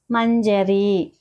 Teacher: ఉగా పలకాలన్నమాట కదంబ అనేసని కదంబ కదంబ అనేసిని చెప్పి మంజరి మంజరి అన్నప్పుడు మ పక్కన సున్నా ఉంది కదా అంటే ముక్కుతో పలకాలి అనుస్వారం అన్నమాట